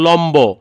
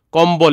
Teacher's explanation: যদি কখনো ম ব্যঞ্জনের সঙ্গে হচ্ছে বফলা হয় তখন সেই ক্ষেত্রে বয়ের উচ্চারণ হবে।